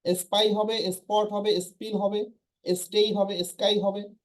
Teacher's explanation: এখানে ফ ঠ খ হবে না, কারণ সামনে শুরুতে এস আছে। সো এস থাকলে কখনোই এটা হবে না।